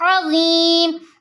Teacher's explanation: حروف مدہ کے بعد زو کا سکون عارضی آ رہا ہے، یہاں مد عارض وقفی بنے گی جسے ہم 3 الف کے برابر کھینچ کر پڑھیں گے